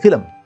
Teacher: most urdu speakers particularly in pakistan when they say this word they add an extra schwa between le and mer so they'll say film they won't say